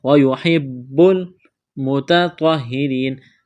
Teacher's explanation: تا کو باریک کرنا ہے اور اس طوا کو موٹا کرنا ہے